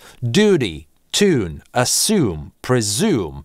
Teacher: В ударном слоге внутри слова после /d/, /t/, /s/, /z/ его быть не может, потому что в этой позиции для американского английского характерен Yod-dropping, звук /j/ исчезает